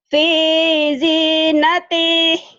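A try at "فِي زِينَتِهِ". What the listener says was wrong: Salah. Nggak ada yang panjang.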